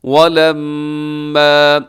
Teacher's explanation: یہاں میم مشدد ہے تو آپ یہاں غنہ کریں گے میم کے اوپر